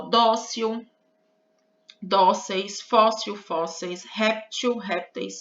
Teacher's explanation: essas palavras são paroxítonas ou seja a sílaba forte é a penúltima